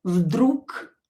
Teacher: Because voiced consonant located at the end of the word will become unvoiced. So G will be pronounced as K.